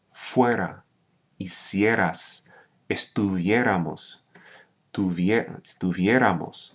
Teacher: when you say these forms, you do stress the second to last syllable